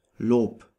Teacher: B is pronounced like in English, Bär, Leben. However, when B is at the end of a word, it is pronounced like a P